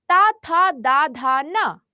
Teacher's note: दंत। क्योंकि जब हम ता बोलते हैं तो हमारी जो जीभ है वो दांतों को टच करती है।